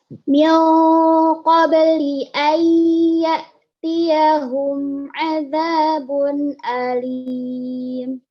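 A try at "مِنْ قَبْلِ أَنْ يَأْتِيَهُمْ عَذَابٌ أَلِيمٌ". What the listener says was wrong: Nah, sempurnakan domatainnya. Jadi nggak boleh cepet-cepet, nggak boleh azabun alim, tapi azabun alim. Sempurnakan harokatnya, sempurnakan hurufnya.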